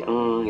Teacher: Misalnya bunyi eng itu kan di rongga hidung ya.